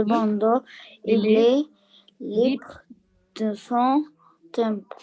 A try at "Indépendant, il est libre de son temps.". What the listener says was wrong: Temps. C'est pas temple, c'est temps. Mais temps. Temps, c'est comme time.